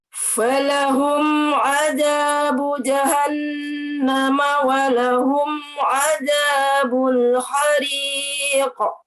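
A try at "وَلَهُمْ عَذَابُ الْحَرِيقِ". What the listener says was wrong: Nah, huruf za-nya tipisin lagi ya. Tipisin lagi. Za-nya zal, Zal. za. Ah, dikit aja keluarnya, dikit aja. Za. Ya, za, tipisin. Za.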